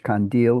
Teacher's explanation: from Turkish kandil with a nasal and a voiced stop